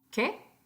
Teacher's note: So if I say, yo compré un coche nuevo, and you didn't hear me, ¿qué? So I'm raising my voice at the end.